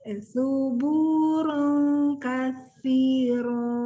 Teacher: Harus lebih konsisten kalau ketemu sa, lidahnya memang otomatis harus keluar.